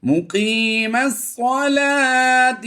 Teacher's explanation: یاد رہے یہ لام کھڑی زبر لا ہے، صلا وا نہیں کریں گے